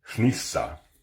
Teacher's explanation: It is an example of the voiceless N that exists in Old Norse. That's spelled HN. · It may even sound a little weird, but it's not too crazy. It's just essentially an N pronounced without your vocal cords.